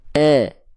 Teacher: Saya lafalkan vokal I-nya tanpa mengangkat bagian tengah lidah.